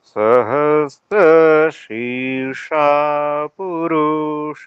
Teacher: शी में जो ई है वह काफी नीचा जा रहा है जिसके कारण से फिर मूर्धन्य सकार में जो आ है जी